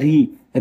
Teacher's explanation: ऋ मूर्धन्य वर्ण है और ह्रस्व भी है।